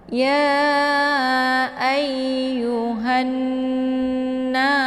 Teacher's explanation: ya ditekan kemudian ditahan dulu, baru dilepaskan suaranya ke dalam na ya. Kemudian na dipanjangkan bacaannya karena di sini ada alif sebelumnya berharakat fathah. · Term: gunnah musyaddadah